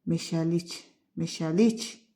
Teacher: meşəlik axıra düşür də vurğu. O da cingilt samitlə başlayan hecadadır. · Xeyr. Vurğu sözün sonundadır.